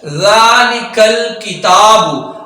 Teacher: ہم جب ذالک الکتاب پڑھ رہے ہوتے ہیں تو وہاں ہم زا پڑھ رہے ہوتے ہیں، زا نہیں پڑھنا، ذال پڑھنا ہے، بغیر سیٹی کے پڑھنا ہے